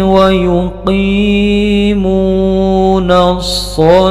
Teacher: Ini nun harokatnya fathah langsung bertemu dengan shad yang bertasdid. Alif lamnya tidak dibaca dengan jelas, disebut dengan alif lam syamsiyah.